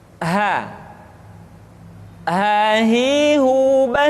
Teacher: huruf H dikeluarkan dari tenggorokan yang terjauh sama seperti kita mengucapkan huruf a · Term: huruf ha